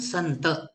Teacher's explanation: इथे न च अनुस्वारा जागेवर आपण न च उच्चारण करतो का नच उच्चारण करतो कारण पुढे त आलेला है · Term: अनुस्वारा उच्चारण बदलत